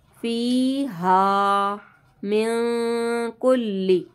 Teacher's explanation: नून साकिन के बाद काफ है, इख्फा का गुन्ना करेंगे।